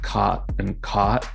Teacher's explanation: the words c-o-t and c-a-u-g-h-t end up having the same vowel in this case an ah